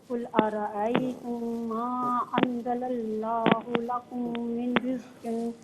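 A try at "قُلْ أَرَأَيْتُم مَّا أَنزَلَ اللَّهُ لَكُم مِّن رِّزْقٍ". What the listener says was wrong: لکم میں کاف کو باریک پڑھیے. لکم من رزق نہیں، لکم من رزق. من رزق نہیں، مر را کی آواز نکالیے. من رزق.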